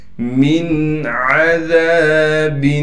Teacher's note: من عذاب، میم کو نون سے ملائیں گے بغیر غنہ کے، عین کو صاف کر کے گلے سے نکالنا ہے